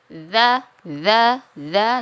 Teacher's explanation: Huruf zal itu makhrajnya ialah pertemuan antara ujung lidah dengan ujung gigi seri bagian atas.